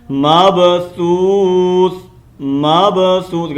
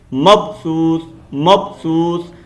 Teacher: با کا کلکلا کرنا ہے، با کو ہلانا ہے